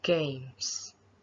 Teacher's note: stop the air with the back of your tongue against the top of your mouth move your tongue to release the air and you will feel the vibration on your throat and if you hold a piece of paper in front of